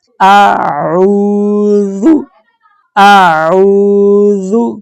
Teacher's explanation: یہ جو عین ہے اس کی آواز حلق سے آئے گی۔ عین کے ساتھ واو ہے، واو جزم والی، اس لیے ہم عین کو 2 حرکات کی مقدار لمبا کریں گے۔ سادے الفاظ میں بتاؤں تو تقریباً 1 سیکنڈ تک لمبا کریں گے۔